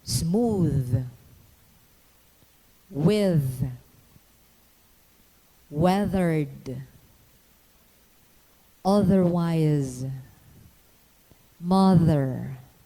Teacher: the tongue tip must be extended between the teeth the obstruction is incomplete and the release of the air is gradual